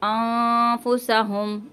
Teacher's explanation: यहाँ पे नून साकिन के बाद फ़ा आ गया इसलिए गुन्ना कर रहे हैं। एक फ़ा का गुन्ना हमेशा नून साकिन की आवाज़ को छुपा कर होता है।